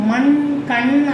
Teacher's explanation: மண் கண் அப்படிங்கும் போது அந்த நாக்கு வந்து அழகா போய் மேல அன்னத்தை தொடும்